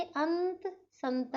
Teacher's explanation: अनुस्वार का उच्चारण नाक से किया जाता है